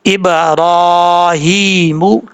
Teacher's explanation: با حروف قلقلہ میں سے قلقلہ ہوگا کیونکہ یہ ساکن ہے۔ ہا کھڑا زیر ہی، میم پشمو، ابراہیم، اس طریقے سے پڑھا جائے گا۔